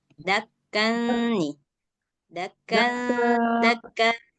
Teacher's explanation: Suara nun sukunnya itu sedikit digantung. Jadi dia kayak samar-samar suara nunnya itu nggak terlalu jelas kedengaran suara nun, tapi juga nggak hilang sama sekali. Dakka, dakka, sama digunahin. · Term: Ikhfa